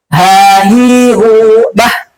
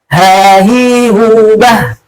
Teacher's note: Wuhan haniha la minal muhmimahihan haniha. Ya, huruf ha makhrajnya, ya, pangkal tenggorokan. Yang salah adalah dia sampai melebihi dari pangkal tenggorokan sampai bergetarnya ke dada.